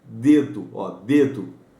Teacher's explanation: encosta a ponta da língua atrás dos dentes superiores